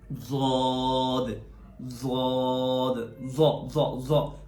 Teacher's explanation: اوپر کی داڑھوں کے ساتھ، نیچے کی داڑھوں کے ساتھ نہیں، تو وہاں سے ضاد ادا ہوتا ہے · میں تو اس کو زبان کی دائیں طرف کو، دائیں کروٹ کو اوپر کی داڑھوں کے ساتھ لگاتا ہوں